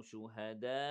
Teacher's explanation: We have 4 seconds. مد متصل